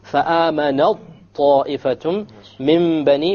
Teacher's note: So we did idgham. We dropped the ta. You don't hear the ta sound.